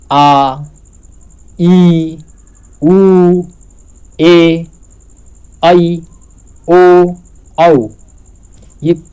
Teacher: ह्रस्व स्वर से लगभग 2 गुना का समय लगता है दीर्घ स्वर को बोलने में